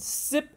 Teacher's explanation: It's an alveolar. The tip of the tongue is right behind the front teeth. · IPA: /s/